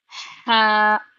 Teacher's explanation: हा हलक के दरमियानी हिस्से से आवाज आएगी